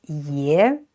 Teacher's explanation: it's pronounced ye and with a rising tone